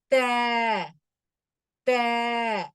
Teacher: நாக்கினுடைய நுனியால் அதை போய் தொட்டுட்டு வந்துரும், ஓபன் ஆயிரும். த தொட்டுட்டே இருக்காது. · மேல் பற்களினுடைய வேர்களை நம்ம நாக்கினுடைய நுனி வந்து என்ன பண்ணுதுன்னா போய் தொடுது